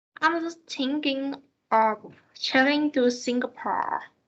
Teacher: the word Singapore is the most prominent because it provides the new information to the listener